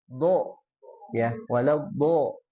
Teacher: Bagaimana menebalkan huruf D? Nah, menebalkan huruf do dengan pangkal lidahnya ya atau lidah belakang naik